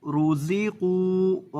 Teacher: را کو اور قاف کو پر کر کے پڑھیں گے اور زا میں سیٹی پیدا کریں گے